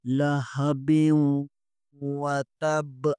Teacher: لہبیوں یہاں با کے نیچے 2 زیر ہے، تنوین کے بعد واو آ رہا ہے، حروف یرملون میں سے واو آ رہا ہے، یہاں ادغام مع الغنہ ہوگا۔ لہبیوں وتب، بیوں پڑھنا ہے، بیوں نہیں پڑھنا۔